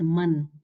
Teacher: there is no vowel. But you can still hear the Nun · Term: Nun al-Sakina